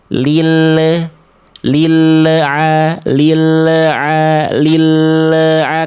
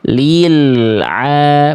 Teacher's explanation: lam ada sifat tawasut namanya. Sedikit mengalir dulu. Maka diantar dulu bunyinya al itu sampai ke ain ya. Lil aa. Baru ketika sesaat akan melafalkan huruf ain lepas baru makhrajnya.